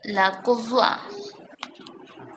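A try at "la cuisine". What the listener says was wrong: এটা একটু চেঞ্জ হয়ে যাবে, লা কুজিন। এক্স্যাক্টলি কুজিন, লাস্টে ন থাকবে একটা, লা কুজিন।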